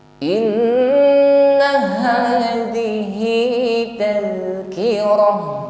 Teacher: Nun tasydid ada gunnah musyaddadah, ditahan, jangan keburu dan sempurnakan bunyi dengungnya.